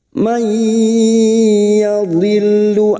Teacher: nun sukun bertemu ya idgham biguna, siap masuk dengan mendengung masuk pada huruf ya dan mendengung selama 3 harokat.